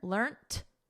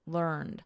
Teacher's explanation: notice we have a soft T here learned and then in American learned with a soft D